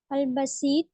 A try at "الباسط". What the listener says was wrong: باسط الف ہے نا.